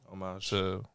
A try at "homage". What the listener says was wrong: Aha! You didn't pronounce the H on that one, did you?